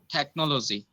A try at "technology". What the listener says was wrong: No, you are putting too much of efforts on no. Technology. That no sound is very soft. Technology. You don't have to say no. You have to be very soft. Technology. Technology. Don't put too much pressure. Be a little soft.